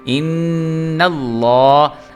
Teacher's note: لام جو ہے اس کو ہم پر کر کے پڑھیں گے کیونکہ اس کے جو پچھلا حرف ہے اس کے اوپر زبر ہے، اس لیے ان اللہ۔